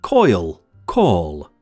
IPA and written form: kɔɪl kɔːl (coil call)